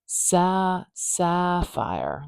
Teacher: Can you hear how the sapphire, like it's really a lot louder and longer at the beginning. That ah vowel is quite stretched out. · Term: stress patterns